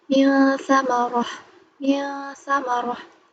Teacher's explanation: Dia dengung tapi nggak ditempel banget. Diusahakan untuk menghindari eng ini.